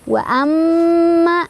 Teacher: Wa amma, di sana ada gunnah musyaddadah karena ada mim yang bertasydid. Cara bacanya didengungkan dan dengungannya ditahan sampai kerasa ke hidung. Wa amma, ma ada mad tabi'i karena ada alif, sebelumnya ada fathah.